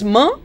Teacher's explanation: m is a bilabial nasal